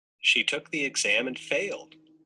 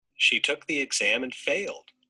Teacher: mid to high has a kind of contrast or a surprise meaning